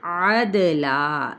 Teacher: عین وسط خلق سے اور دال پہ قلقلہ کیا جائے گا، لا پہ کیا ہے وقف الف مدہ کے ساتھ کیا تو وقف بالابدال کہلائے گا۔